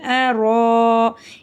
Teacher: இந்த இடத்துல ரா மேலே ஜபர் இருக்கிறதுனால ராவை நம்ம வல்லினமாக ஊதணும். அலிஃப் மேலே பெரிய மத் இருக்கிறதுனால 5-7 அலிஃப் வரைக்கும் நல்லா நீட்டியும் ஊதணும்.